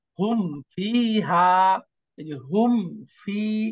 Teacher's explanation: ঠোঁট যুক্ত হয় হুম, এরপরে ফা উচ্চারণ করলে ঠোঁট আবার খুলে জিভ নিচের ঠোঁটের প্যাটের সাথে দাঁত যুক্ত হয় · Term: মিম সাকিনের ইজহার